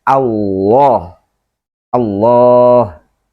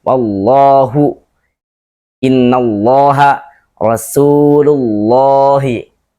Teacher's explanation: Terangkat pangkal lidah sehingga bunyinya menjadi lo, bukan lo. Maka kita baca Allah, Allah, gitu ya. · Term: dibaca tebal